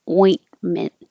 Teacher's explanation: the airflow you don't have to say the T ointment and you go back up to the T position or the in position and you don't release the T so it looks like there's two T's but you won't hear · once you get to the in position and you're stopping the airflow, you don't have to say the T.